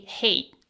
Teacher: in fast casual speech, native speakers often say hate without the clear t at the end. They cut off the tea.